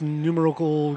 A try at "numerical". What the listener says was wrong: Numerical. You put the emphasis on the wrong syllable.